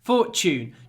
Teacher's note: try to pronounce the T like CH Fortune chune because it's Tu and Tu